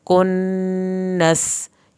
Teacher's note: کنس، یہاں پہ نون کی شد پہ دیر لگے گی اور سین پہ سیٹی کی آواز نکلے گی